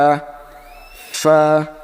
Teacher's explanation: ফা উচ্চারণ হবে নিচের ঠোঁট উপরের দাঁতের সঙ্গে লাগায় ফা